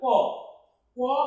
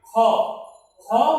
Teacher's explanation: দেখো অল্প প্রাণ মানে প্রাণ ছোট, অর্থাৎ যে ধ্বনিগুলোর উচ্চারণে বাতাসের চাপ কম থাকে, যেমন দেখো ক, ক উচ্চারণে বাতাসের যে চাপ থাকে, খ, খ উচ্চারণে কিন্তু বাতাসের চাপটা বেশি থাকে। তো ক উচ্চারণে বাতাসের চাপ কম থাকে বিধায় এটাকে বলা হয় অল্প প্রাণ ধ্বনি।